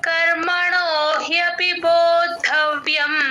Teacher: బోద్ధవ్యం విబోద్ధవ్యం అనేది hard word లాగా కొంచెం ఇది జాగ్రత్తగా చెప్పాలి అందరూ బో కి మహాప్రాణం లేదు బోధవ్యం ద కి ద వత్తు మహాప్రాణం రెండు వినపడేటట్టు చెప్పాలి బో కి ద ని జాయిన్ చేసి చెప్పాలి బోధ్ అలా వినిపించాలి బోద్ధవ్యం